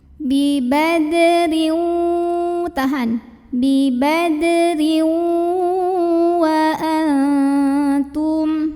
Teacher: Berikutnya ada idgham bi gunnah karena ada tanwin kasrah yang bertemu dengan huruf waw. Maka tanwin kasrahnya dileburkan ke huruf waw, dimasukkan ya. Jadi bukan bibadrin tapi bibadriu, masuk ke waw disertai dengan dengungan.